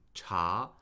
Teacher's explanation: if you say cha with the second tone, that can mean tea